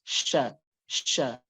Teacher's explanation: shin memiliki sifat khusus yaitu tafsyi, atau dia nafasnya atau suaranya itu menyebar dengan luas.